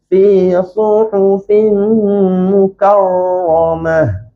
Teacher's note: ra yang fasih ni dia tak bergetar lebih daripada sekali. Jadi tak nak baca mukarramah, tak fasih. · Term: ra tebal